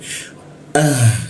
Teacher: H juga posisinya di tenggorokan bagian bawah. Ah seperti itu.